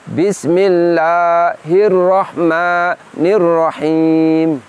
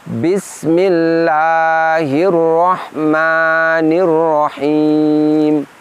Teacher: Jangan sampai terdengar seperti ada bunyi hamzah sukun. keluarkan suara secara lembut dan bersambung.